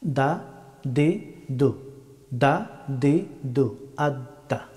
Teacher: দাল হরফটি উচ্চারিত হয় জিহ্বার অগ্রভাগ এবং সামনের দুই দাঁতের গুড়ি।